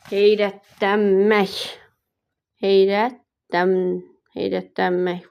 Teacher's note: 4 hecalıdır, vurğu son hecadadır.